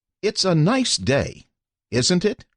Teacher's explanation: speakers saying something that they are almost certain the listener will agree with use a falling intonation